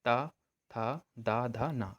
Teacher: कहाँ पे करता है, जो आगे वाला दांत, जो हमारी जीभ है उसका आगे वाला भाग, जो हमारे ऊपर वाले दांत होते हैं तो उनको स्पर्श करता है। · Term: दंत व्यंजन